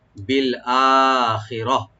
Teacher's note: আর এখানে আমরা যদি ওয়াকফা করি, এখানে ওয়াকফা জায়েজ আছে, এখানে এলাও আছে, তো লাস্টে গোল তাটা হা হয়ে যাবে